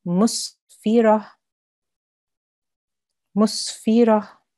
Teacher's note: ta al-marbuta changes into a ha sakin. And remember, when you are pronouncing that, you have to pronounce the ha sound.